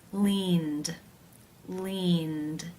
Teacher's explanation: of the verb in infinitive form is the n consonant sound this is a voiced consonant therefore it is case 2 where the e d is pronounced as the d sound